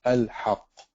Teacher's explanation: You can't merge the lam with the ha.